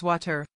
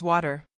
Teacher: In standard American English, when a T or a double T falls between two vowel sounds, we do not pronounce it as a sharp T. We flap it, making it sound like a very soft, fast D. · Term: flap T